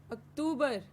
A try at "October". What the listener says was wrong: Not October. Just like no, there is no two. There is no two in October. It's like the toes on your feet.